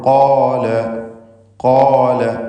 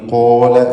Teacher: ചുണ്ടിൻ്റെ സ്വാധീനം തഫ്ഖീമിൽ ഉണ്ടാവുകയില്ല എന്നത് പ്രത്യേകം ശ്രദ്ധിക്കുക.